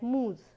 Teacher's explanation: moose is also a long oo vowel, it is not two vowels coming together